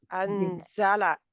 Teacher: زا نیچے والے جو دو دانت ہے ان کی پیچھے لگتی ہے زبان کا سرا آ کے